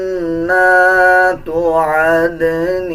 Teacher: نون کے اوپر شد آ رہا ہے، غنہ کیا جائے گا اور غننے کی آواز کو ناک سے نکالا جائے گا